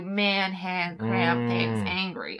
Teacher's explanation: The A will sound clipped, like almost like the American.